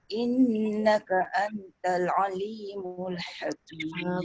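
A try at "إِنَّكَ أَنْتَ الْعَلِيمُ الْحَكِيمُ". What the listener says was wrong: Bonda punya dengung dekat ikhfa tu sikit lagi.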